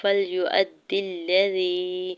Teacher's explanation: حمزہ کے زبر کو دال مشدد کے ساتھ ملاتے ہوئے پڑھنا ہے اور دال کی زیر کو لام مشدد کے ساتھ ملاتے ہوئے پڑھیں گے